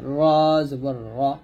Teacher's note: র জিহ্বার আগার উল্টা পিঠ তার বরাবর উপরের তালুর সঙ্গে লাগবে